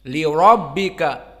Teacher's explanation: lam yang kedua li yang kasrah muraqqaqah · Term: lam muraqqaqah